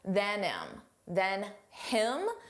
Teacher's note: Notice how you don't hear the h on him.